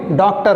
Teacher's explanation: तो ये ओ की तरह होता है, पूरा ओ भी नहीं बोलते हैं, आ भी नहीं बोलते हैं